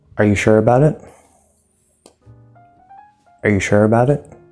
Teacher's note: it does not stress but we're going up with that intonation